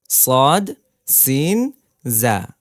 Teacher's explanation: আট নম্বর প্রশ্ন যা উচ্চারণ কিভাবে কোন জায়গা থেকে হবে বলেন জিবার আগা সামনের নিচের দুই দাঁতের পেট ও আগার সঙ্গে লাগিয়ে উচ্চারিত হয় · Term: 12 নম্বর মাখরাজ